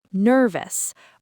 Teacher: The stress is on nerve. So, the ending is us.